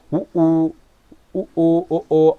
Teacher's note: வாயை திறக்கக்கூடிய முயற்சியில் இதழை குவித்ததால் பிறக்கக்கூடிய எழுத்துக்களாக இருக்கும் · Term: இதழ் குவிந்த உயிர்கள்